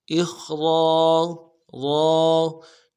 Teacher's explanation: हमज़ा को खा के साथ मिलाना है, खा को मोटा अदा करेंगे, रा को मोटा अदा करेंगे, रा के साथ अलिफ मद्दा है, एक अलिफ दाल में खींचेंगे, इखरा रा।